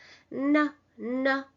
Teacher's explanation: You don't need to make the sound too nasalized. It's like n. The tip of the tongue touches the alveolar zone.